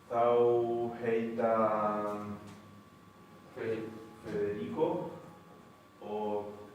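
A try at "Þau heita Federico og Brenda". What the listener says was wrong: Pero recordemos que este pronombre no se pronuncia thou, sino que se pronuncia thøy. Thøy heita Federico o Brenda.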